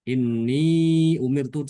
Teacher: Inni umirtu sama-sama dibaca empat harokat, disukunkan ianya.